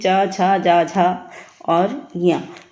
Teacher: तालव्य से ही च छ जा झा और य यह व्यंजन है